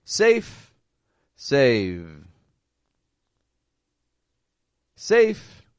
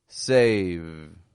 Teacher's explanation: same vowel sound but the second stretches out a little longer because the V is voiced